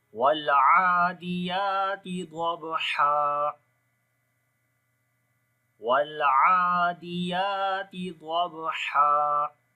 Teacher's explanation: لام کے اوپر توسط ہوگا، عین کو لمبا کریں گے، کھڑی زبر ہے، یا کو بھی لمبا کریں گے، یہاں پر بھی کھڑی زبر ہے، تا کو باریک پڑھیں گے۔